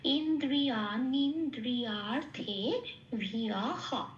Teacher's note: বিসর্গ শেষে থাকে পূর্ণ হ হিসেবে প্রতিস্থাপিত হয়ে যাবে